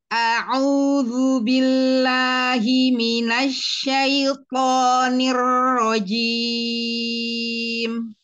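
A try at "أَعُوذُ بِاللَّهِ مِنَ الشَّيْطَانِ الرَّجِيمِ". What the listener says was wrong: Nanti dikecilkan lagi domahnya ya, dikerucutkan lagi. Ya, ya U-nya itu besaran, kebesaran. U kecilin lagi nanti ya, Masya Allah.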